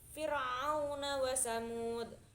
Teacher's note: Lanjut di ayat ke-18, itu ada Fir'auna wa Samud, itu ada huruf fir yang ro-nya itu sebelumnya berharokat kasroh, jadi cara membacanya itu tarkik, yaitu tipis